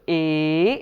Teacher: So ‘a- ā’, then the palatal ones ‘i-ī’, then the labial ones ‘u-ū’, then on top of the cerebral ‘ṛ-ṝ’ and then the dentals ‘ḷ ḹ’and then we do a combination of when we go from ‘a’ to ‘i’ the sound we encounter in the middle is the ‘e’ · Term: guṇa